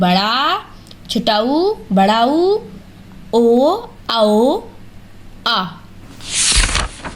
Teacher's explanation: पश्च स्वर में हम जीभ के पिछले भाग का सहयोग लेते हैं।